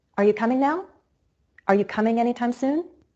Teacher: those adverbs of time are not stressed they're content words but the verb is the more important word so I place emphasis on coming